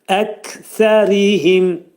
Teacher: Kəf hərfinin məxrəci dilin sonu və dilçəyin axırındadır. Bu cürə deyirik əkəriim.